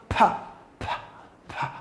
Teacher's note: of the vocal C for example you pronounce the consonant P you find no vibration within the vocal cord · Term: voiceless consonants